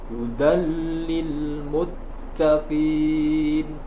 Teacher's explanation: Tidak boleh dibaca hudallil muttaqin, tidak boleh. Yang benar harus dileburkan tanpa disertai dengung. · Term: idgham bila gunnah